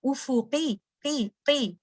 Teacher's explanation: قاف جب کے نیچے جب کسا آ جاتا ہے ہیوینس کم ہو جاتی ہے